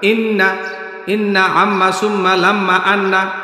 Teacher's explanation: আবার দেখাই, ইন এ ধরে রাখলাম, ইন না, সাথে সাথে ছেড়ে দিবেন, মানে এক আলিফ টান পরিমাণ টেনে তারপরে ছেড়ে দিবেন। এটাকে বলা হয় গুন্না। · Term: ওয়াজিব গুন্না